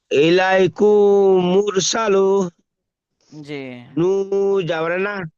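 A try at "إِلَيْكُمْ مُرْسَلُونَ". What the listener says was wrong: তাড়াতাড়ি হয়ে গেল একটু গুনা করে পড়েন টান দিয়ে পড়েন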